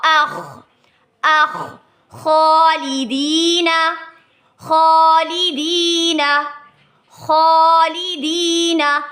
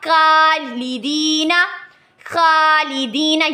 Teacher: جی next ہمارے پاس حمزہ کے ساتھ اگزامپل ہے، حمزہ زبر خا، اخ، اخ، خالدین، خالدین، خالدین۔ خا والی ساؤنڈ یعنی موٹا کرنا ہے ہم لوگوں نے اندر سے، ٹھیک ہے، نہ کہ ہم نے اس کو پڑھنا ہے خالدین، خالدین، یعنی اس کے اندر کاف اور جو ہا ہے وہ دونوں کی ساؤنڈ آئے، تو یہ پڑھنا غلط ہے۔